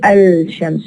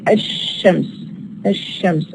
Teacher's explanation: But in the case of ash-shams, we don't produce the la. We say ash-shams.